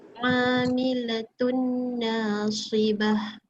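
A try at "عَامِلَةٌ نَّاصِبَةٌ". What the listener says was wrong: Sekali lagi na dia panjangkan sikit. Dengung ni dah lama sikit for 2 beats.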